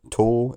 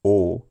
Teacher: the word tor in its strong form has a long vowel